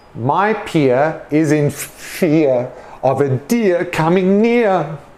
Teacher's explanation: with the e a r we don't pronounce the r sound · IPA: /ɪə/